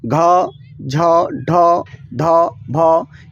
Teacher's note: इसको बोलने में थोड़ा क्या ज्यादा ध्वनि निकलता है तो इसको महाप्राण कहेंगे